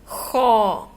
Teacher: ہونٹوں کو گول نہیں کرنا زیادہ. اگر ہم ہونٹ گول کر لیں گے زیادہ تو ہمارا لفظ خوک میں چلا جائے گا، واو کی بناوٹ میں. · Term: موٹے حروف